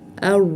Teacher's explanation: tilimizni uchini tanglayimizga tegizmay, tilimizni ikki chetini tegizgan holda chiqarishimiz kerak. ar Ya'ni o'zbek tilidagi r bo'lib qolsa bo'lmaydi. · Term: sukun